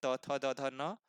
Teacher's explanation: तो इन सभी वर्णों का उच्चारण स्थान दंत भाग से होता है